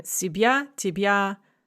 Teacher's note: Both words are n-stressed. There's no unstressed syllable following the stress. These are masculine rhymes.